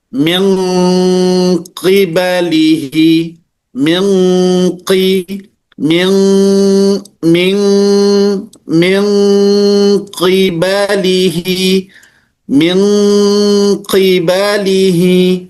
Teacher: Pertama misalnya nun bertemu dengan qaf dan nun bertemu dengan kaf, ya. Nanti nun dengan qaf akan timbul satu huruf yaitu eng. Engnya lebih kuat. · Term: ikhfa ab'ad